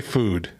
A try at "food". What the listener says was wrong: You say it like it's almost a U, like food.